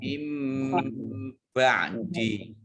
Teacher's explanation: nun sukun bertemu dengan huruf ba. Ini bacaan iqlab, kembali. Baknya dibaca mim